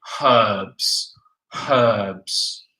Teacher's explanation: in the UK we say we aspirate the H